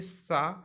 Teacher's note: और जब आप सा बोलेंगे सा, तो ये सा वृत्तस्य में आता है। इसमें आपका जीभ है जो दांत और दंत मूल पे लगेगी, मसूड़े पे, दांत में और मसूड़े साथ में।